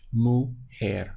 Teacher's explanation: This JE takes on like a H sound in Spanish.